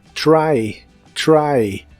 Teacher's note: try para pronunciar el sonido de la letra T en inglés empiezas con la lengua desde más arriba en el paladar que en español por eso suena como una ligera Che cuando le sigue una r